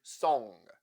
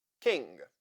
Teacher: it's essential to remember that NG is a one sound not a sequence of two sounds n and G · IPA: /ŋ/